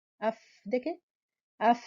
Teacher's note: دانت آ کے جب فا کے مخرج پہ نیچے کے ہونٹ پہ ٹکراتے ہیں اس کے تصادم سے حرف فا ادا ہوتا ہے. ایسے اف، دیکھیں اف، یہ تصادم ہو رہا ہے.